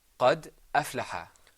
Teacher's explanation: the Hamza is in the middle. It comes after the word قد, and you can still hear it.